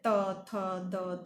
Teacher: ફેફસામાંથી નીકળીને નાદતંત્રીઓ પાસે થઈને મુખ વિવરમાં આવેલી જે હવા છે એનો દાંત પાસે અવરોધ થાય તો આપણને દંત્ય વ્યંજનો મળે છે